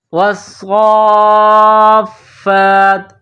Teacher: صاد کو موٹا پڑھیں گے، صاد میں سیٹی کی آواز پیدا کریں گے، صاد کے اوپر تشدید ہے، صاد مشدد ہے، تو واو کو صاد کے ساتھ ملائیں گے تشدید کی وجہ سے، صاد کو فا کے ساتھ ملائیں گے تشدید کی وجہ سے۔